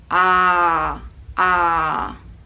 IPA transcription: ɑ: